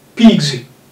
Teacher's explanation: That S is, it turns to Z because G is voiced.